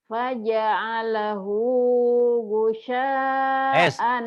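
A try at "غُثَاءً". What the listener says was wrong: Sin. Bukan sin tapi sa. Gusa. Cadel.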